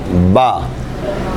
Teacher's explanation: बाछ मिली रहें। हरफे बा और मीम में दोनों होठ इस्तेमाल होते हैं। दोनों होठ आगे को इस तरह निकले कि बांछे मिली रहे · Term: इंतबाक शफतन